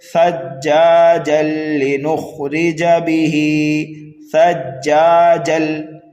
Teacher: جیم کو ہم لام مشدد میں ملا دیں گے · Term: ادغام